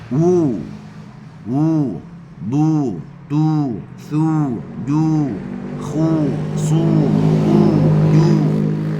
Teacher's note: Muncung yang sempurna adalah la yatimud dam illa bidammi syafataini damma. Tidak sempurna dhammah melainkan dengan kita memuncungkan mulut dengan muncung yang sempurna.